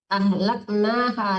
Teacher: ha-nya panjang karena di depannya ada alif ya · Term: memanjangkan baris di atas